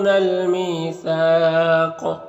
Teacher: قاف میں قلقلہ ہوگا، یعنی اس کو ادا کرتے وقت اپنے مخرج سے اس کی ٹکر کھا کر اس کی آواز الگ ہو جائے گی، اور مد عارض وقفی بھی ہوگا، اور قاف کو موٹا کر کے بھی پڑھنا ہے، یہ حروف مستعلیہ میں سے بھی ہے، تو اس طرح سے پڑھیں گے۔